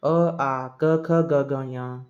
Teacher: ಕಂಠ್ಯ ಕಂಠದಿಂದ ಉಚ್ಚಾರ ಆಗತಕಂತ ಶಬ್ದಗಳು